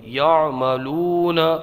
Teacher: واو مدہ ہوگا، ایک الف کھینچ کے پڑھیں گے